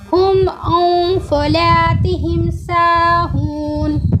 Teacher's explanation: जब इसके पहले नून साकिन या तनवीन आता है, यानी कि दो ज़बर दो ज़ेर दो पेश, उसके नून को क्या करेंगे? नाक में छिपा के पढ़ेंगे और उसको नून को आधा पढ़ेंगे और 1 सेकंड वहाँ पर रुक के पढ़ेंगे।